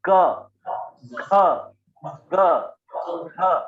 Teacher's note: आप अगर बोल के देखेंगे क ख ग घ इसका उच्चारण कंठ से होता है क वर्ग का।